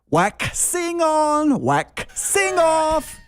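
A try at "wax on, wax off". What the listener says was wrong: You're over pronouncing the X.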